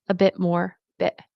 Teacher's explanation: I don't always pronounce the T. I don't always make it pop. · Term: glottal stop